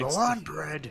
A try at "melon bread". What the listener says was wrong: There's not an I in it at all. I'm gonna just keep referring to it as melon bread.